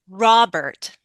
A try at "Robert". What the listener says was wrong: I also need to hear the T at the end. It's not like T, but Robert.